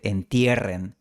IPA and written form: en'tije.ren (entierren)